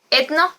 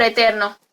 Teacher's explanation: la tendencia a la aspiración de la R delante de N